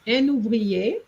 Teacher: you need a liaison between un and ouvrier, un ouvrier, and that goes un ouvrier in one go, and it's a compulsory liaison.